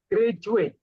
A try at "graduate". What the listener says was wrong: Oke, nah, oke, very good.